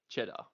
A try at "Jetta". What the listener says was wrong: It's with a J. It's not cheese. Not cheddar. It's not cheese. Name is Jetta. Yeah. Yeah. Jetta. Jetta.